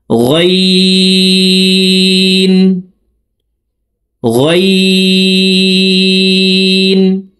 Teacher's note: দেখুন হলকের মধ্যখান থেকে উচ্চারণ করব, আইন আইন আইন গাইন গাইন হরফের উচ্চারণ হলকের শেষ থেকে হবে, কারণ গাইনের মাখরাজ হলকের শেষ থেকে।